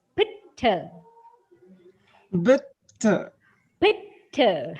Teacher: The aspirated consonant occurs in the first syllable.